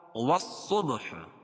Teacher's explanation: واو کو صاد میں ملائیں گے، الف لام نہیں پڑھی جائے گی کیونکہ یہ حروف شمسی کے 14 حرفوں میں سے ہے، تو یہاں لام نہیں پڑھی جاتی ہے.